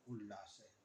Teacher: त के बाद ल आया हुआ है। ल का जो उच्चारण स्थान है उसी हिसाब से इसका भी होगा तो यहां ल हो जाएगा। बनेगा उल्लास।